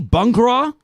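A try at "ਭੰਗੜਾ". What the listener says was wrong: The thing is that sound is missing in Western languages. Like first sound like Bhangra.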